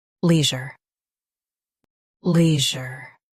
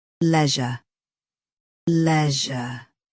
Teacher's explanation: US has lee. UK has le. End is zher versus zha. Practice repeatedly and you'll soon be able to say this word perfectly. · US has lee. UK has le. End is je versus je.